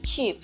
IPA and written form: kiːp (keep)